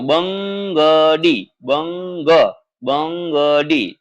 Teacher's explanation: તો બ પછી ન આવતો એવું લાગે અને પછી ગડી લાગે છે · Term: અનુસ્વાર